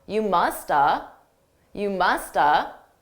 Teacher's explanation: I didn't actually say have. I reduced that entirely to just You musta. You musta. I could also reduce it to more of an of sound, which is very commonly done by native speakers.